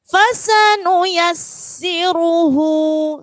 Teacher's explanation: Ya, di situ sinnya ada tasydid, ya. Sin yang pertama tidak ada tasydid, sin yang kedua ada tasydid. Jadi yang pertama tidak ditekan, yang kedua ditekan.